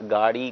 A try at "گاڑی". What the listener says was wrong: ہاں، گاڑی، گاڑی، گاڑی نہیں بلکہ گاڑی، آپ نے درست پکڑا، گاڑی نہیں بلکہ گاڑی ہے، گاف ہے، گھے نہیں ہے، یعنی گاف کے ساتھ دو چشمی ہے نہیں ہے، خالی جو ہے وہ گاڑی ہے۔